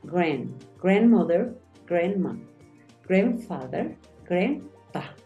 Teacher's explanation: Acuérdate que esa A suena más como una E